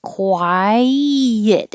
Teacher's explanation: And 22 is two syllables, quiet. Your tongue should go very high for the I, quiet, and then slide down and make a Y.